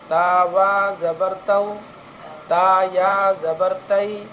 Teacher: تو اس کو پڑھنے میں اس بات کا خیال رکھنا ہے کہ اس کو سختی کے ساتھ اس واو اور یا کو سختی کے ساتھ ادا نہیں کرنا ہے، اتنی نرمی کے ساتھ ادا کرنا چاہیے کہ اگر اس کو ہم کھینچنا چاہیں، اس پر مد کرنا چاہیں تو آسانی سے ہو جائے، لیکن کھینچنا نہیں ہے. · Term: واو لین